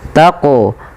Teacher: panjangkan lu 2 harakat karena ia mad tabi'i